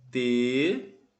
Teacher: ela é uma proparoxítona. Ou seja, a antepenúltima sílaba é mais forte. Por isso ela leva acento.